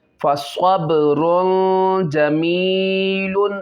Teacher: نوحا ہدینا فصبر جمیل، اب یہاں پہ دیکھیں با میں قلقلہ کریں گے، قلقلہ خوب ظاہر، تنوین اور جیم میں یہ اس میں اخفا ہوگا، غنہ کریں گے